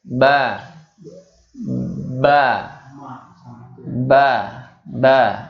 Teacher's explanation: mba-mba 2by dua bibir nempel dulu mbah mbah mbah mbah ya tempatnya yaitu dua maksudnya adalah di dua bibir